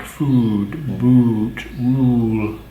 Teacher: this is the pure you and it has there's no diphthong